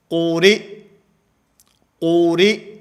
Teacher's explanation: قاف کو موٹا، را کو باریک، اور آخر کے اندر حمزے کو ساکن کر دینا ہے۔ اور یہاں قوریٰ کے اوپر جو حمزہ ہے یہ حمزہ بشکل یا ہے۔